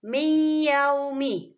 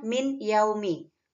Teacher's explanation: Karena nun sukunnya dimasukkan ke huruf iya dengan dengungan. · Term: idgham bi gunnah